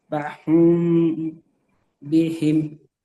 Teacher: মিমের উপরে সাকিন, মিমের উপরে সাকিন, মিম সাকিনের পরে বা এসছে, তাই মিম সাকিনকে এক আলিফ পরিমাণ গুণা করে পড়তে হবে। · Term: ইকফায়ে সাফাবি